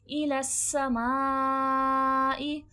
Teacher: सीन में सख्ती सिटी की आवाज आएगी · الی السماء، یہاں پر سین میں سختی سیٹھی کی آواز آئے گی اور ماں میں مد ہے اور اس مد کا نام ہے مد متصل، یعنی کہ حمزہ جڑا ہوا ہے، اسی لفظ کا حصہ ہے. ٹھیک ہے، تو یہ مد متصل ہے، 3 سے 4 الف کی مقدار کے برابر کھینچ کے پڑھا جائے گا.